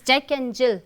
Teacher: Okay, Jack and I won't stress much on this, Jack and Jill. So, I am stressing on Jill.